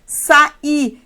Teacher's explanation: Mas quando o I está mais forte que o A, estando depois dele, ou melhor, depois de uma vogal, ele é acentuado e eu vou ter duas sílabas